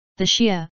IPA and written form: ˈʃiːə (Shia)